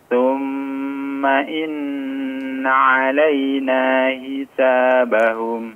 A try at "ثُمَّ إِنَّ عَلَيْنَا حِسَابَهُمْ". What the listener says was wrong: Haknya diperjelas.